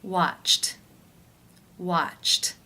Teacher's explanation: The final sound of the verb in infinitive form is ch. That is an unvoiced consonant sound. Therefore, it is case 1, where the ED is pronounced as the T sound.